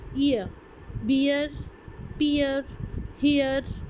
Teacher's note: इन सब में आपकी एक साउंड जो है वो श्वा की तरफ जा रही है